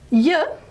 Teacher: yeah is a palatal approximant